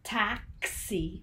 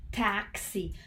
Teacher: la X está teniendo el sonido de la K y la S al mismo tiempo